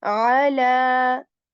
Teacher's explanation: from the middle portion of our throat, a is articulated